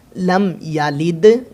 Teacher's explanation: لم یلد گنہ نہیں ہوگا، دال کے اوپر کلکلا ہوگا۔